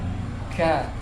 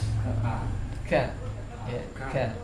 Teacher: kalau ka suara plus angin, ada angin ya. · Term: huruf hamas